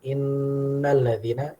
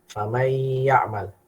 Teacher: Jadi ketika kita mengucapkan innalladzina dengan famay ya'mal, gunnahnya lebih kuat yang inna.